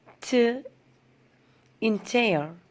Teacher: The sound begins with a complete closure and ends with friction. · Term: Affricates